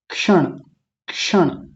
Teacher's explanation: बहुत हल्का सा क आता है, क्योंकि है आधा, तो उतना ही आएगा।